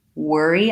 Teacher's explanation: So it's just like the word were plus an E sound, first syllable stress.